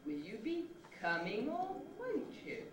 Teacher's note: it's a little rise starting on will and then a new rise starting at a different point